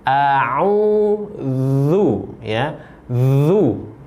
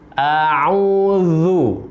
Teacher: Pastikan kita membacanya sesuai dengan makhraj huruf za. Za ini makhrajnya berada di ujung lidah dengan ujung gigi seri yang atas.